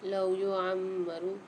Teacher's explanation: لام کے ساتھ واو ساکن ہے، لام کو ایک الف مقدار کھینچیں گے۔ میم کے اوپر مشدد آ رہی ہے تو عین کو میم کے ساتھ ملا کے غنہ کر کے پڑھیں گے۔